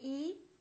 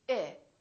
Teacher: we say I very neutral very relaxed